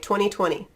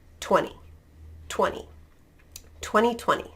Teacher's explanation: so if you have that nt really in that unstressed syllable you're just going to drop the t the t is gone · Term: dropping the t